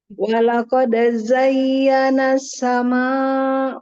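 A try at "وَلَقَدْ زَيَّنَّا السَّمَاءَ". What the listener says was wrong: Ya, itu kan nun tasdid. artinya musyadadah yang paling apa sempurna ya. jadi agak dibaca lama.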